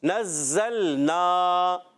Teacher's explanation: زا کو سختی سے نہیں پڑھیں گے، سیٹی سے پڑھیں گے. اور زا کو لام سے ملائیں گے، لام کو ہلائیں گے نہیں.